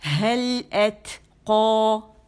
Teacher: اگر میں روانی کر رہی ہوں، یہ 2 الفاظ ہیں، اب 2 الفاظ میں 2 ساکن اکٹھے ہو گئے، ایک تو الف والا اور ایک جو ہے وہ لام ساکن والا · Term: اجتماع الساکنین